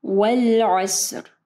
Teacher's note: اچھا یہاں پہ دیکھیں والعصر، عین کو جو ہے واضح پڑھنا ہے، ٹھیک ہے۔ پھر صاد جو ہے وہ ہیوی لیٹر ہے، ٹھیک ہے، یعنی اس کو ہم لوگ موٹا پڑھیں گے، اس کو سین نہیں پڑھنا